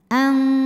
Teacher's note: Sebab nun sukun menghadapi huruf qaf, maka dibaca nun sukunnya samar-samar siap-siap menuju makhraj huruf qaf yaitu pangkal lidah sambil didengungkan. Ang. Karena qaf makhrajnya jauh dari nun yaitu di pangkal lidah, maka bunyi dengungnya besar. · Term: ikhfa hakiki